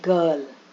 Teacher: Now when R is coming in between, it is just omitted.